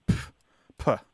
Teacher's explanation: it's a sharp exhalation of air with a p sound at the beginning